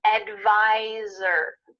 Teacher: Make sure that when you say the word advisor, there's a Z sound there where the S is.